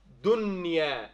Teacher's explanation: Because it's not one of the six throat letters. So you say dunya with no extra ghunna as well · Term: idhar